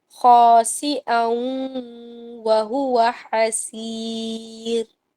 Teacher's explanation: خا میں آپ نے ہونٹوں کو گول کرنا ہے، خا اور حلق سے نکالیں گے خراش کے ساتھ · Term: خا فرکشن